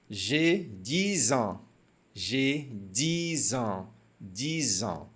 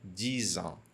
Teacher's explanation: Mais uma ligação com o som de Z aqui